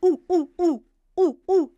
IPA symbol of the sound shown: u